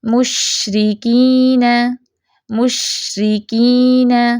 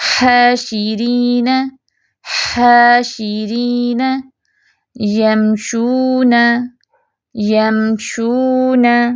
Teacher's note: جلدی سے شین کو بند نہیں کر دینا. مشرکین نہیں، شین میں جو وہ پھیلاؤ ہے وہ آنا چاہیے.